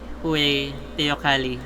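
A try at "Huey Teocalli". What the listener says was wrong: I don't think you pronounce it as Huey because they're Aztec.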